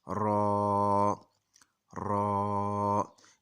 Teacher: सिर्फ रा और अलिफ का, ये दो हरूफ का मजमुआ है इसकी आवाज़, तो इसको ज़्यादा लंबा नहीं करेंगे